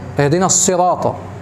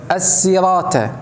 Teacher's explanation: يبدل الصاد الى س ويبدل الطا الى ت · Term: لحن جلي